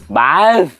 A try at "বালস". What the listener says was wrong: আরে হ্যাঁ, এই তো কাছাকাছি। আর একটু বাতাস বার করতে হবে, বালস।